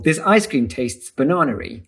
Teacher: this is known as intrusive R, and it's a way of resolving vowel hiatus · English speakers are very uncomfortable about this, and so when it happens, we'll often insert an R to break up the hiatus